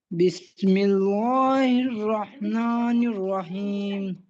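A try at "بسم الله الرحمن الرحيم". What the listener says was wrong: बिस्मिल्लाह लाम को मोटा नहीं पढ़ेंगे नर ये यहाँ पे लाम बारीक पढ़ा जाएगा ऐसे बिस्मिल्लाह ऐसे नहीं बिस्मिल्लाह नहीं बिस्मिल्लाह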